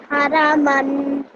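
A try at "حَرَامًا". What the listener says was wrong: This ha sound over here, try to, again, this comes a bit more from deeper within your throat. Ha.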